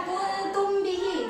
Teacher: Mim mati bertemu ba, jadi harus samar nih. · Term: ikhfa syafawi